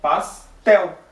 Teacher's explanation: a sílaba mais forte é tel, pastel, né?